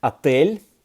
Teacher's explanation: in the word отель, a hotel, L is soft, it's softened by the soft sign. So when you put it in the plural, even though L is not on that list of the 7 consonants, right, that would require an E in the plural, but still you would apply an E because you want to keep the L soft.